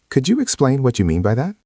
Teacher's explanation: Listen to the intonation. It goes down at the end. It is soft.